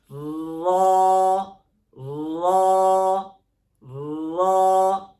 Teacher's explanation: اس کو پڑھتے ہوئے کیا کریں گے، ہونٹ جو ہے ہماری یہ ہونٹوں کی حرکت بالکل نہیں ہوگی. جیسے را، اس کی زبان جو ہے وہ اوپر تالو کے اوپر لگے گی اور جو ہے اس کو موٹا پڑھیں گے.